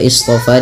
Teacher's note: Kemudian lafal hastafa atau istafa di sini shadnya ya ditebalkan sedikit sehingga membedakan antara huruf shad dengan huruf sin. Meskipun makhrajnya hampir sama ya, atau makhrajnya sama ya, shad, sin dan zai.